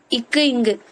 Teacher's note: நாக்கோட அடி அன்னத்தோட அடி